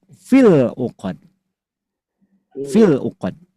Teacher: Kalau dua kata dan sukun satunya huruf mad, maka huruf madnya tidak diucapkan, tidak dibaca, tidak dilafalkan, dibuang. Jadi hasilnya bunyinya pendek.